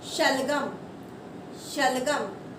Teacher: शलगम बोलते टाइम जोर थोड़ा कम लग रहा है, तो हम इसे कौन सा वाला श बोलते हैं? तालव्य श बोलते हैं। यानी कि हमारी जिह्वा जो है वो तालू को टच करती है।